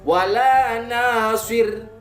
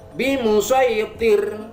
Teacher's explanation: Ada ro yang diwakofkan namun sebelumnya ada huruf kasroh, maka harus dibaca tipis